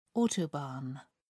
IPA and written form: ˈɔːtəˌbɑːn (autobahn)